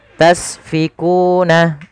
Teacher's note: Agar sempurna alirkan nafasnya karena sin punya sifat sofir. Sifat pertama hamus, ada sifat sofirnya berdesis ya.